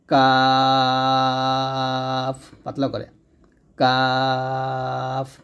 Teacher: কাফের হামস মানে বাতাস বের হবে সিদ্ধা মানে আওয়াজ পূর্ণ পর্যন্ত থাকবে ইস্তেফাল হরফ উচ্চারণ পাতলা হবে